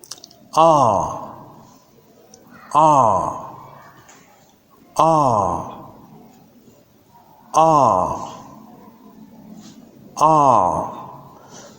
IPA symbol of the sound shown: ɑː